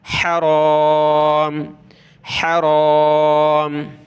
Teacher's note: रा को मोटा करेंगे, ज़बर है इस पर , हराम, हराम। वज़्कुरूहु, वाव को ज़ाल के साथ मिलाएंगे, कुरूहु,